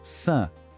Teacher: Agora o francês, san. Percebe como o som francês é mais aberto, mais contínuo? · a boca fica meio aberta e o ar flui pelo nariz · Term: vogais nasais